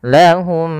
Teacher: Maka langkahnya adalah kita mengidghamkan mim yang pertama kepada mim yang kedua dan ditahan suara nya atau suara mimnya. Maka lahum ditahan. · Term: idgham mimi